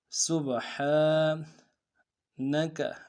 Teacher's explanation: با حرف قلقلہ میں سے قلقلہ کریں گے، ہا کے اوپر کھڑا زبر ہے ایک مقدار میں کھینچیں گے